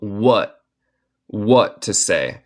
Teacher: Si se puede notar en mi acento estadounidense, muchas veces cuando una palabra termina en T, yo hago lo que se llama un glottal stop y no digo el T.